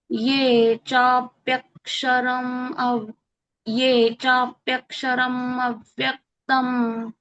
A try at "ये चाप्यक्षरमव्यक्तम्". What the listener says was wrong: नाही नाही, तू ते रम असं नाही म्हणू नको म्हणू. चाप्यक्षरमव्यक्तम मव्यक्तम असं म्हणायचं.